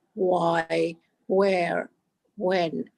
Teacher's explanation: So your teeth, your upper teeth have to go over your lower lip, and that's a V. And a W is rounded or kissed